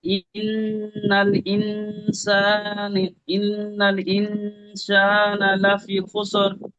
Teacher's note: এখানে নুন তাসদিদ গুণনা হবে, তারপরে নুন সাকিন এসছে, নুন সাকিনের পরে হরফে একবার 15টি অক্ষরের মধ্যে সিন এসছে।